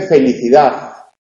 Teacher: Pero hay otros alófonos dialectales. Hay zonas donde se realiza interdental y se dice felicidad. En el Valle del Duero.